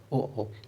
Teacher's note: इसमें ओठ जो है मेरे वो गोल हो जाएंगे उच्चारण करते समय